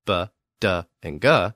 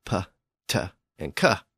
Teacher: stops PT and K so in other words for some reason the early Germanic tribes stopped using their vocal cords when they pronounced those three voiced sounds B- D and G and as a result without the vocal cords The Sounds became p t and c